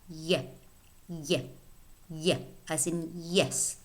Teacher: the center of the tongue touches or approaches the hard palate, the middle of the oral tract, or the roof of the mouth. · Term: palatal sound